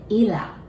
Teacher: We don't have R sound in Japanese, so we pronounce it like L, right? So it's almost like a girl's name, Ella.